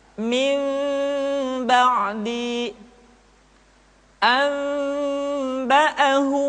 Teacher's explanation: Kemudian diucapkan mim dengan cara yang samar. Caranya ketika mengucapkan huruf mim, kedua bibir kita agak sedikit direnggangkan, tidak sempurna rapat. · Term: iqlab